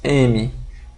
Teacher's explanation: O ponto de articulação do M na verdade, é bilabial. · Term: bilabial e nasal